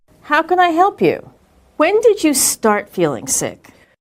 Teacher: When she asked a question that began with when or how, her intonation was falling